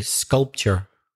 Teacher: being from Belfast, we exaggerate the R a bit more.